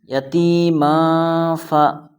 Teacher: یہاں پر تنوین کے بعد حروف اخفا میں سے فا آیا ہے، اس لیے یہاں اخفا ہوگا، یعنی ناک میں آواز کو چھپا کر پڑھنا ہے